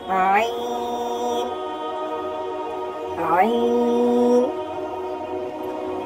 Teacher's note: یہ ہے عین، گلے سے آواز آتی ہے اس کی